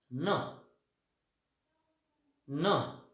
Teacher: न first is व्हॉइस्ड because vocal cords are vibrating.